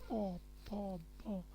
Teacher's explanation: প থেকে ম, অষ্টধ্বনি। প প ব ব ম, প্রত্যেকটা বর্ণ বলতে গেলে দেখেন দুইটা ঠোঁট অষ্ট ওষ্ঠ আর অধর মিলিত হচ্ছে